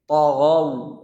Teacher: Ta dan ghainnya tebal. Ta tapi tidak mencucu bibirnya. Mencucunya hanya pada saat mengucapkan wawlinnya.